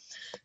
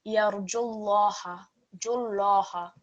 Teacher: And for this reason, it is not going to be heard in the recitation. So the instruction here is to omit or delete the sound of Waw here.